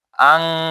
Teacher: এখানে আলিফ আছে, আলিফ, তারপর আছে যে নুন, নুন সাকিন, নুনের উপর কি সাকিন, সাকিনের উপর আছে শিন, তাহলে শিন তো ইখফার কায়দা, তাহলে এখানে ইখফা করে পড়তে হবে, মানে গুন্না শহীদ মা আল গুন্না, ইখফা গুন্না শহীদ গোপন করে নুনকে, এই নুনকে গোপন করে পড়তে হবে। আন না বলে আং পড়বে, আনশাআহা।